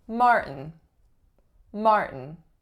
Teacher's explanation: first syllable is the winner and the sound that it makes is an R colored vowel are the second syllable and so syllabic N or schwa N